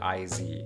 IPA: ɪz